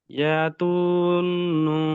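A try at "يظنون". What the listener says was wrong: ইয়া ত না, ল, ইয়াজুন্নু।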